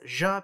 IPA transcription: ʒ